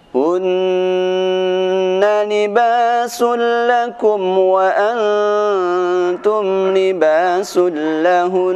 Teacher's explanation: Yang kedua, waqaf pada huruf yang bertasydid berupa huruf nun. Huruf nun ketika bertasydid maka dia akan dibaca dengan dengung. Ketika di akhir bacaan pun tetap harus dibaca dengan dengung.